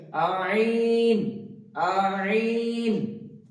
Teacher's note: কণ্ঠনালীর মধ্যস্থল থেকে উচ্চারিত হবে আইন